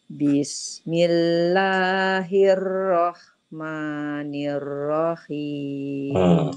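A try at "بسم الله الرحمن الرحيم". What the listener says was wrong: Ibu ingat hirro nirro hirro nirro. Jadinya langsung masuk ya Bu ke ro-nya. Jangan memanjang.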